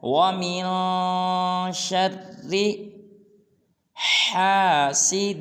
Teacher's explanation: شرّ میں شین کو را کے ساتھ ملانا ہے کیونکہ را مشدد ہے اور وَمِن پہ اخفا کرنا ہے